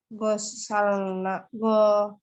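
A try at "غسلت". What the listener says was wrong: tambahkan tak, Bu. Tak sukun. Gosalat.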